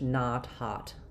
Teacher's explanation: it's very open and very unrounded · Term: a vowel